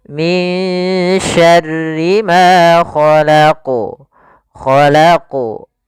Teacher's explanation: Khalaqu tetap memantul dan dia awdah, lebih jelas dibandingkan yang dia di tengah. Karena di sini juga termasuk qalqalatul kubra.